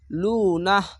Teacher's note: এখানে কোন টান হবে না শুধু নাহ বলে থেমে যাবেন